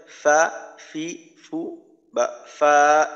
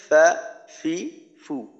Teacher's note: নিচের ঠোঁটের পেট সামনের উপরের দুই দাঁতের আগার সঙ্গে লাগাইয়া উচ্চারিত হয়